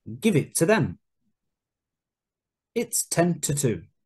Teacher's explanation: the important words are stressed and to becomes weak